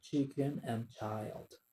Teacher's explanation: a single sound composed of a stop portion and a fricative portion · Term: affricatives